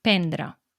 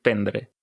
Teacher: Doncs sí, és una pregunta interessant perquè és veritat que s'escriu que el verb conté dues R's, s'escriu prendre, però la primera R no es pronuncia normalment, o sigui, la major part de la gent no la pronuncia